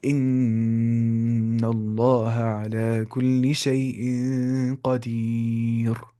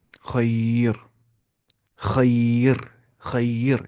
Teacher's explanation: کیونکہ را ساکنہ سے پہلے یا ساکنہ ہے، تو ہر حال میں را کو کیا پڑھنا ہے؟ باریک آواز ہے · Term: رائے ساکنہ